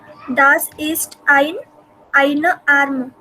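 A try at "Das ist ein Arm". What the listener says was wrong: ein arm. अभी यहाँ पे ई नहीं है ना आगे, वो ein, EIN, उसके आगे अगर ई होगा तो you have to pronounce that eine. अगर नहीं है तो ein arm.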